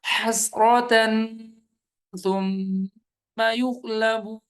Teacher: تن پہ تنوین غنہ ہوگا